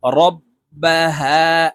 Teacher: হার উপরে খারা জবর, এই হাকে একালিপ টেনে পড়ব